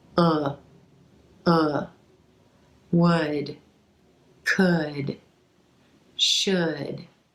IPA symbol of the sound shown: ʊ